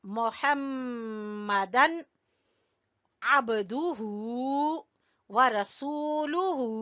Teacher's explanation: दोनों होंठों को मिलाएंगे और गुन्ना करेंगे मीम पर